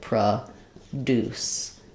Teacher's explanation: So in produce, the verb, you'll see this line before the deuce syllable, which means it's going to sound like produce. The deuce syllable is going to be the stressed syllable. It's going to be the one that's stretched out and longer and has a clear vowel.